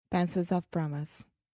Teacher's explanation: So pencil, that's the schwa. It changes a little bit because it has the L after, but then of, schwa, promise.